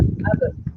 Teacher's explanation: Kalau kita nak mat ke abba kan, tapi kalau kita nak berhentikan betul, dia akan ada qalqalah lah huruf ba kan